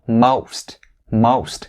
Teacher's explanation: this word ends with the st sound and these are voiceless consonants